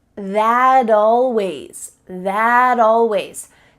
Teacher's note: we link together words by making the final T change into a D